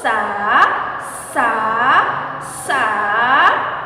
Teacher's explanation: dilepaskan dengan ujung lidah dipertemukan dengan gigi seri bagian bawah ya untuk sah sah sah mempertemukan ujung lihat dengan gigi serih